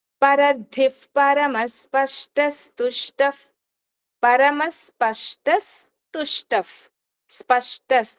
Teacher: 42 వ శ్లోకం 42వ శ్లోకము సెకండ్ లైన్ చూడండి పరధి పరమస్పష్టస్తుష్ట పరమస్పష్టస్ తుష్టఫ్ స్పష్టస్ ఆ తు ముందు వచ్చిన విసర్గ ఇస్ అవుతుంది. పరమస్పష్టస్ తుష్టఫ్ తుష్టఫ్ ప ముందు వచ్చింది ఎఫ్ అవుతుంది.